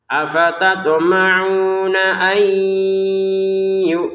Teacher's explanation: nun sukun bertemu ya, kita bacanya masukin nun kepada ya, sehingga cara bacanya ay seperti itu, nggak lagi terbaca an sudah.